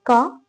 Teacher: का बोलते टाइम अधिक हवा नहीं निकल रही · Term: अल्प प्राण